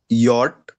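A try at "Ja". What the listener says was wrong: Okay, yacht, correct.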